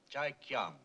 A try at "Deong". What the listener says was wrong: The name is Deong, sir. It's pronounced with a D.